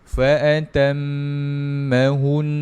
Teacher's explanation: Dia mesti dengungkan juga dua dua harakat. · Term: wajibul ghunnah